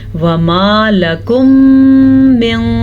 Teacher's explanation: ان دونوں کو آپس میں ملائیں گے، غننے کے ساتھ ملائیں گے، اور ادغام شفوی کہتے ہیں اس کو